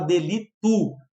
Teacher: Às vezes a gente pode falar delito, falar com U, ou seja, tu mudou o O para U